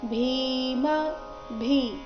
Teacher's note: ಭೀಮ ಭೀ ಮಹಾಪ್ರಾಣ ದೀರ್ಘ